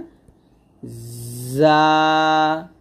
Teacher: জিহ্বার আগার সামনে নিচে দুই দাঁতের মাঝে লাগবে।